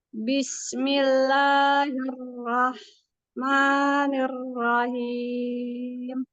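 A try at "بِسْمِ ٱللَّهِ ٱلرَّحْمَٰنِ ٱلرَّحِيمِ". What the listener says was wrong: Basmalahnya mengalir aja ya Bunda, jangan ada terjeda ya. Bismillahirrahmanirrahim.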